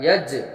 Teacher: कलकला हो रहा है जिसमें पढ़ते वक्त आवाज़ लौटती है